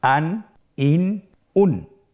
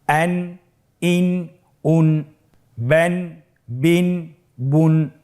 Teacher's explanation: প্রত্যেকটি উচ্চারণের শেষে দন্ত ন উচ্চারিত হচ্ছে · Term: তানবিন